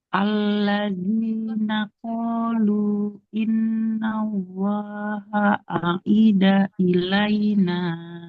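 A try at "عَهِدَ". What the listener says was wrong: Ahida. Ahida. Huruf H Ibu ya. Ahida. Alladzina. Alladzina qalu.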